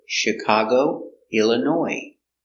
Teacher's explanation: Illinois comes from French too, so we have a silent S. In French words, they have a S at the end.